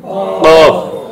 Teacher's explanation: জিহ্বার গোড়া উপরে তালুর সঙ্গে লাগে